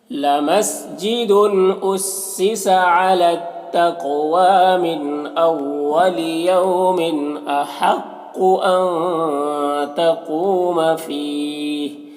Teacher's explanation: احق کو قاف حروف مستعلیہ میں سے پر پڑھیں گے، نون میں اخفا ہوگا